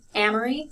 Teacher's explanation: so i stress the first one the second two are not stressed